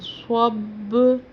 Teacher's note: صاد کا تلفظ کا خیال کرنا، یہ سین سے نہ ملے، سب نہیں کرنا، صب۔ با پر ہم قلقلہ کر رہے ہیں اس لیے ہم اس کو صب پڑھ رہے ہیں، 2 دفعہ آواز نکل رہی ہے